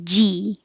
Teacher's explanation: g has the e vowel your tongue just stays very high g and z your tongue's very high and you need airflow